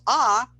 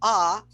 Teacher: the tongue is really really low giving us a very open cavity for air